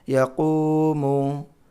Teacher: یہاں واو مدہ، صرف قاف کو کھینچنا ہے، باقی زبر ہے یہاں پہ پیش ہے، نہیں کھینچنا ہے